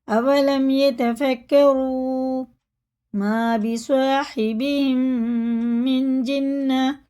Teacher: اس نون کو ناک میں لے جا کے ایک الف کے برابر کھینچ کے پڑھنا ہے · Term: اخفا